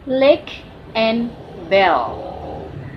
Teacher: airflow passes to the sides of tongue usually when pronouncing them. If your native language uses the Latin alphabet, changes are that the L in it is in lateral.